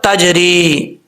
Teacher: را کے بعد یا مدہ ہے، ایک الف کی مقدار، اس کو لمبا کریں گے